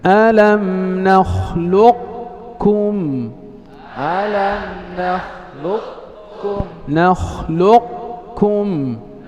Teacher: الإدغام الناقص بقاء صفة استعلاء القاف · كأنك ستنطق قافا ثم تختم بكاف